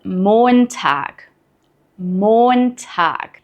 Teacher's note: make sure to stretch the O sound in Montag. This is a long O vowel.